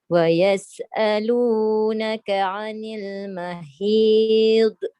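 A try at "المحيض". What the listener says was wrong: Jangan bunyi d. Dia punya tebal dah cantik dah tu. Mahid. Tapi jangan d.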